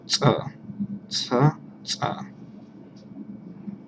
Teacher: you use the front of your tongue to stop the air for a moment so it comes out with a burst of air